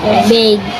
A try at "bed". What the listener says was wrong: E. E, nasa letter E. E, ang sound na. Bed.